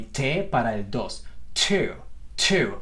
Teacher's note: Fíjense cuánto aire estoy logrando dejar salir y lo estoy impulsando. Fíjense que estoy tratando de hacer una pequeña explosión bastante más perceptible que lo que harían por la T en español. Tenemos que tratar de hacer una T que suene más explosiva.